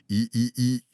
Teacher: On expulse l'air par le nez. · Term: le son in